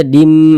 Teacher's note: disertai dengan ghunah yang dimasukkan itu apanya Ini Bunyi tanwin ini bunyi tanwinnya ini dimasukkan ke huruf mim melebur ke huruf mim kita baca junim Dim Jangan dibaca Jun Din Din jangan tapi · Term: idgham bhunah